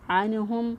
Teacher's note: نون ساکن کے بعد دیکھیں حروف حلقی میں سے ہا آ گیا، اظہار کریں گے